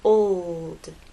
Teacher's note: it's important to make the L long enough so that it's heard